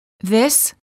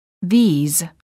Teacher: is pronounced with the short I sound and a s the word these is plural and is pronounced with a long vowel e and a z sound